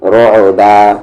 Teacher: رو، یہاں پر ایسا نہ کہہ دے رک، یہ غلط ہو جائے گا. عین بیچ والے حلق میں آواز جائے گی رعبا. اور دوسری غلطی قلقلہ بھی نہیں کر دینا ہے ہم کو، رو اس طریقے سے نہیں، رعبا.